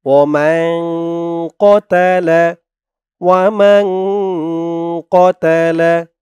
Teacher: পৃষ্ঠায় নুন সাকিনের পরে এই পৃষ্ঠায় ইকফার হরফ কফ তাই ওখানে ইকফা নাকের ভিতরে গুন্না করে পড়া হয়েছে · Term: ইকফা গুন্না